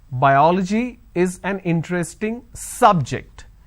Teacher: i'm stressing on the first syllable